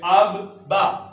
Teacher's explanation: جس حرف کے اوپر شد ہوگی وہ حرف دو دفعہ پڑھا جائے گا، کیونکہ ہوتا ہی دو دفعہ ہے